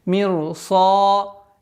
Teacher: После ра идет твердый звук, и долгота в размере 2 огласовок твердого произношения. Мирсада. Теперь обратите внимание, после твердого произношения даль мягкий.